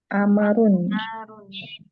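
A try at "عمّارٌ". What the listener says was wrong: Ammar. Mimnya bertasyid ya. Ammarun.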